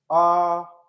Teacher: विवृत का मतलब होता है पूरा खुल जाना, मुंह खुला हुआ मुंह